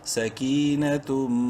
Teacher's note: تنوین کے بعد میم ہے اور میم مشدد ہے غنہ کریں گے